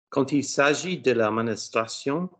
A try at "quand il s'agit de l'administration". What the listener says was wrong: now close your mouth and give me the vowels. just asked you to close your mouth and give me the vowels. You gave me neither. Quand il s'agit de l'administration, administration.